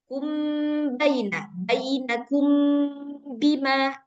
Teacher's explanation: cara bacanya itu disamakan aja dengan iqlab. Enggak perlu ada furjah. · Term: ikhfa syafawi